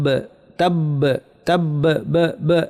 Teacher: বায়ের উপর তাসদিদ আছে, মানে 2টা বা, বায়ের শেষে কলকলা হবে। ওয়া তাব তাব তাব ব ব, এটা হচ্ছে কলকলা।